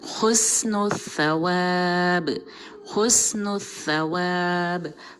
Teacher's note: हुस्न में सीन की सीटी बहुत क्लियर होगी, लेकिन सवाब में सीटी बिल्कुल नहीं होगी